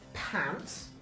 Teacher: P, which is usually written P, right? At the start of words, such as in the word pants, P is aspirated.